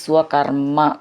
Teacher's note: കർമ്മ എന്ന് ഒന്ന് ഊന്നി പറയണം രണ്ട് മ എന്നുണ്ട്